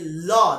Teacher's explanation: দেখো, পার্শ্বিক বলার যে মেন কারণটা, এই ব্যাপারটা হচ্ছে যে ল ল যখন বলি, দেখো ল উচ্চারণ করতে গিয়ে আমার একদম এই যে ল, দেখো আমার জিহ্বাটা কিন্তু একদম সামনের দাঁতের সাথে লেগে যাচ্ছে এবং দুপাশ দিয়ে বাতাস বের হয়ে যায়